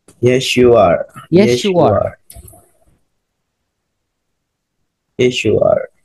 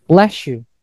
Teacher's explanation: S bertemu dengan Y jadinya sha.